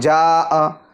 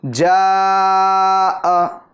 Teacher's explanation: مد متصل کو 2.5 الف کے برابر کھینچ کر پڑھیں گے